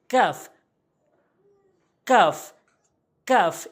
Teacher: জিহ্বার গোড়া হতে কফ যেখান থেকে উচ্চারণ করে করা হয়েছে তারপরে জিহ্বার গোড়া হতে একটু আগে বাড়ায় উপরে তালুর সঙ্গে